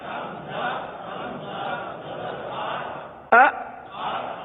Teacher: یہ جھٹکا ہے، یعنی آپ ایک دم سے آواز کو روک لیں